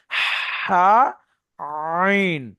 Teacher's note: এই গলার ভিতর থেকে একদম আইন আইন ওইভাবে হা বড় হা যেটা। কন্ঠনালীর মাঝখান হতে হা আর আইন দুটো উচ্চারিত হবে।